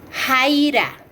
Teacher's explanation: Velar, fricativo sordo, J. Jaira. Postvelar, fricativo, X.